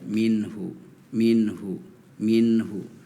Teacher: minhu hu harusnya dibacanya ee ngalir aja minhu minhu minhu ya hampir sedikit ditahan tapi tidak terlalu lama jadi tidak mati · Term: izhar